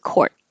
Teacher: So, this little mark here is to remind you to hold your tongue in the T position and don't release court. Just hold it, court.